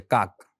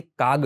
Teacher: અમુક સંજોગોમાં ક હોય ને એનો ગ થઈ જાય